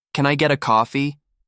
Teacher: if you say it flat, it sounds cold, maybe even rude, but add a little rise and warmth.